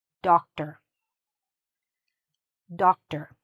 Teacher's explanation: Shorten it, okay? Don't say the or like or, okay?